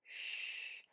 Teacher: For this sound, your lips are rounded, your tongue is not touching your teeth, and the air just continues to move out, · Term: SH sound